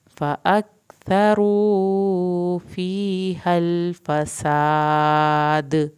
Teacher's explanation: फसाद सीन को सीटी की आवाज़ के साथ पढ़ना है, अलिफ को खींचना है, आखिर में दाल पे कलकला होगा